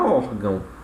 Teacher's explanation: Prova disso é aqui a palavra órgão, certo? O or, né, é a nossa sílaba tônica e o gão, obviamente, vai ser a sílaba átona da palavra